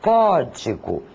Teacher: A intensidade maior é dada na sílaba có. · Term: sílaba tônica